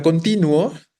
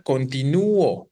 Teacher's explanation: la fuerza no recae ni sobre la U ni sobre la O, recae sobre el ti. Entonces se genera un diptongo en automático en las dos vocales que vienen juntas.